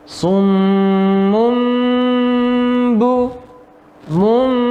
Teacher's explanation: tanwinnya seakan-akan menjadi huruf ba atau menjadi huruf mim ya summum buh ya dibaca dengung yang lama juga juga berikutnya